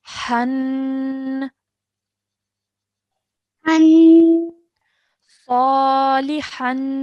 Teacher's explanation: So remember the tanween sound, everybody's making the right sound, but forgetting to stretch that nasal sound for 2 seconds